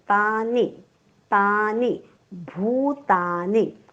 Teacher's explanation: ता दीर्घ घेतला की नी ऑटोमॅटिक ह्रस्व येईल